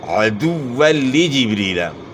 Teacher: عین کی اواز گلے کے درمیان سے نکالنی ہے عدولی جبریلا دال کی پیش کو معروف ادا کرنا ہے اور · عین کی آواز گلے کے درمیان سے نکالنی ہے